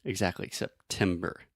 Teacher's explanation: I'm really aspirating which means I'm breathing air out of my mouth and making that pop sound